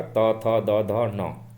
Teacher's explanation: इस सारे अक्षर को बोलने में, बोल के देख लीजिएगा, त थ द ध न, जुबान का नोक जो है वो दांत से जरूर टकराएगा हल्का